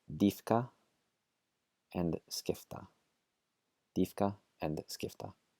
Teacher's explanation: the last rule for the letter P is before the letters K and T, it becomes an F sound.